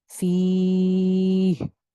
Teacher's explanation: فیہ پہ میں سٹاپ کر رہی ہوں، اس وجہ سے میں کیا کر رہی ہوں کہ یائے مدہ کے اوپر مد عارض لگا رہی ہوں